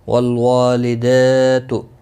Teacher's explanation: والوالدات، واللام ساکن کو ہلانا نہیں، وا الف مدہ ہے، ایک الف کے برابر کھینچ کر پڑھیں گے۔ لدا دال کے اوپر کھڑی زبر ہے، اس کو بھی ایک الف کے برابر کھینچ کر پڑھیں گے۔